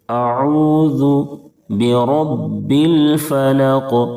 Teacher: را کو پر پڑھیں گے، یعنی موٹا کر کے پڑھیں گے، کیونکہ را کے اوپر زبر ہے اور با کے اوپر تشدید ہے، اس لیے با میں تھوڑی سی سختی کریں گے۔